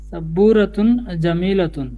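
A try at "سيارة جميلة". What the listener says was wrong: সাব্বু হলে তো বায়ের পরে একটা ওয়াও থাকতো, বারবার এই ভুলটা হচ্ছে।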